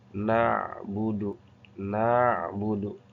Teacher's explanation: ain mempunyai sifat tawasud. Jadi ada angin yang keluar